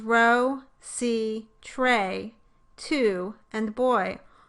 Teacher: all have one syllable with no consonants in the coda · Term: open syllable